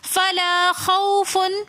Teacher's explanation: خوفن میں فا کے اوپر دو پیش کی تنوین کے بعد حرف ہلکی میں سے عین آ رہا ہے تو اس لیے ہم یہاں پر بالکل بھی غنہ نہیں کریں گے بلکہ واضح کر کے ہم نے پڑھنا ہے فلا خوفن.